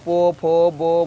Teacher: पो को बोलते हैं ओठ से। देख पो बोल, ओठ सटता है ना सटा है, पो फो बो सट रहा है।